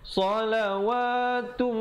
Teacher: idgham bi gunnah di situ, tanwin bertemu mim, masuk beserta dengung kadar panjang 2 harakat